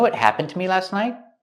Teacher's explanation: It's more common to hear night with a stop T at the end.